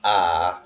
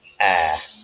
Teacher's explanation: the spanish sound ah is more relaxed than the short sound ah in english